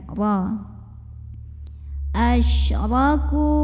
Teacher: Huruf ra dibunyikan secara tafkhim karena ra-nya berbaris fathah. Maka bacanya tebal, pangkal lidah dinaikkan.